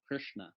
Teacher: it's an R sound with a vowel all through it